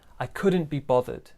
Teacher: small stress on couldn't, big stress on bothered.